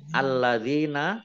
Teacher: Lamnya alladzina, lamnya dibaca double, ada tasdidnya.